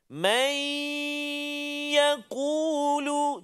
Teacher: Masukkan bunyi nun ke dalam ya beserta dengan dengung.